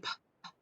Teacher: this is an unvoiced sound made right here at the front of our mouth on our lips. So if we go, this does not involve the voice box.